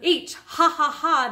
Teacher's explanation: this is a little puff of air in the throat area